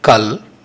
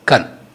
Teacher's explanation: This Kal deformed to Kan as L sound changed to N sound.